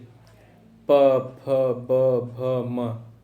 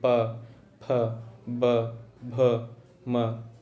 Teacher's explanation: ठीक है, अब आ जाइए ओस्ट पे, प फ ब भ म, बोल के देखिए कहीं कुछ नहीं, आवाज़ आपके केवल दोनों लिप्स, जो अपर लिप्स और दोनों लिप्स हैं ऊपर नीचे, दोनों आपस में टच कर रहे हैं, तभी आपकी आवाज़ निकली